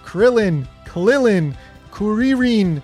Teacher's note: in Japanese, there's really no difference between R and L. That's why Krillin, Klilin, Kuririn, they all end up the same when you write it in katakana.